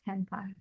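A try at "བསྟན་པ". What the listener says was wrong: Yeah, temba. No aspiration. Temba. It doesn't exist in English. Da.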